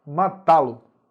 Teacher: A primeira palavra é o verbo, terminou em A, eu tenho que acentuar, porque é oxítona terminada em A. A sílaba mais forte é o tá